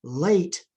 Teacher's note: that's the lateral with the side of the tongue being lowered.